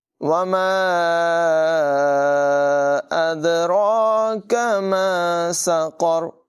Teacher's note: یہاں بھی مد منفصل ہے، اسے بھی 2-3 سیکنڈ تک لمبا کر کے پڑھیں گے. دال میں قلقلہ ہے، را کو پر پڑھیں گے. کاف کی آواز باریک ہے، یہاں قاف کو پر آواز میں پڑھیں گے.